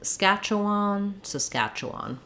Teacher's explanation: Another vowel schwa here for the E, and then last vowel is a, schwan, Saskatchewan. So probably a little secondary stress on the final syllable.